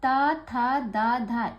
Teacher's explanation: बिना दांत को टच किए आप ता, था, दा, धा इन किसी का उच्चारण नहीं कर सकते